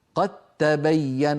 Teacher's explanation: فلا يبقى للدال أثر في النطق، ننطق تاء مشددة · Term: الإدغام